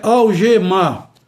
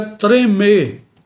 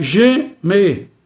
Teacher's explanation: o e permanece com o timbre fechado